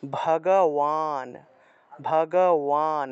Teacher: বান শব্দটা ওয়ান হিসেবে উচ্চারণ হয়